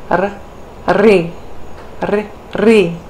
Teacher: for the retroflex, we have the tip of the tongue curling back